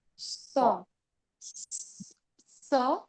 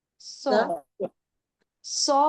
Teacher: सीन का सीन बारीक sound straight है और सॉद का थोड़ा सा फोल्डेड है ना